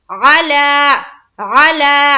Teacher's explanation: लाम के ऊपर खड़ा जबर है, इसे एक अलिफ के मकदार के बराबर खींचना है। वो इस तरह से अला, अला।